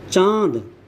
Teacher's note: अनुनासिक में हवा मुख और नाक दोनों से निकलती है।